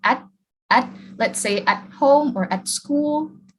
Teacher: when you reduce at, we don't produce the air, let's say for the T, and then we just bring our tongue up, and then it touches here behind the teeth, and then it becomes like at, let's say at home or at school, like you said.